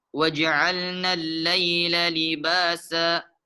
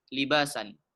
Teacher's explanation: tanwin fathatain yang bertemu dengan alif itu cara membacanya dipanjangkan 2 harakat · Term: mad iwad